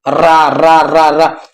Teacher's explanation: रा बोलेंगे तो आपकी जीभ में कंपन होगा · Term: प्रकंपित व्यंजन